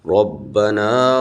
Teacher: حروف قلقلہ میں سے با ہلا کے پڑھیں گے